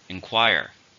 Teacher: How many syllables are in inquire? 3. Stress on the second.